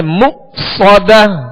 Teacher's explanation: یہاں حمزہ ساکن ہے, اس کو جھٹکے سے ادا کریں گے